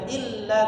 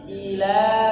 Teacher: ilnya tadi jangan ditekan, jangan illa tapi ila